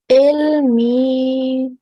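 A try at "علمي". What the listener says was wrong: Okay, try the ayn again. Ilmi. Do the ayn, you have to tighten your throat a little at the back.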